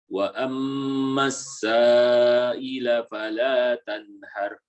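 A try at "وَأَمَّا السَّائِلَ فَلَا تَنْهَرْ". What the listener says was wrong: Itu sudah agak lebih tebal, namun perlu ditingkatkan lagi. Tanhar. Jadi penebalan itu pada akhir. Bedakan ya. Ini anak baca dengan tidak menebalkan. Fala tanhar. Nah, ini tidak tebal. Kalau Anda baca dengan tebal, fala tanhar.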